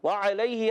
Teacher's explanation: وعلیہ، واو کی ادائیگی ہونٹوں کی گولائی سے. وعلیہ، عین ادا ہوتا ہے حلق کے درمیان والے حصے سے